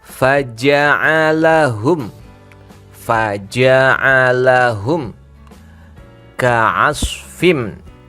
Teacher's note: mimnya sukun ya, mimnya jelas ini. Kalau jelas ada mim sukun bertemu kaf. Mim sukun bertemu kaf, hukumnya adalah izhar syafawi.